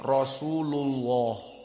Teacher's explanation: Kalau sebelumnya dhammah Rasulullah, maka lamnya mufakhomah.